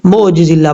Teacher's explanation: اور کئی لوگ پرابلم ان کو کیا ہوتی ہے، عین کو پڑھتے ہوئے حمزہ پڑھ دیتے ہیں اور جھٹکا کر دیتے ہیں، کیسے معجز اللہ پڑھ دیتے ہیں۔